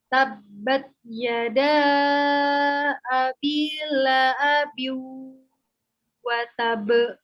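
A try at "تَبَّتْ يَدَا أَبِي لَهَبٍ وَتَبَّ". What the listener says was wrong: Laha, ha-nya jelaskan. Lahabi wa tab.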